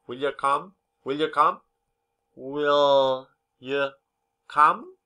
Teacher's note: we and them are usually unstressed and have a weak pronunciation when you is not at the end of a sentence the vowel sound is often reduced to a schwa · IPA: /ə/